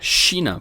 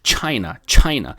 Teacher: O CH em português tem som de China, por exemplo. Mas em inglês seria China. Como se fosse TCH.